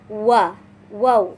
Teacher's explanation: makhraj wau yang dibunyikan dengan kedua bibir menyisakan rongga di tengah-tengahnya sebagai jalan keluarnya suara.